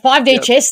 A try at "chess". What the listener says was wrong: Yeah, but we should emphasise chess, not chest. I thought you might have said 5D chest.